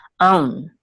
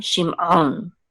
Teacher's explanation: The ayin is not just silent; it's actually guttural, and it's like a Klingon sound from Star Trek.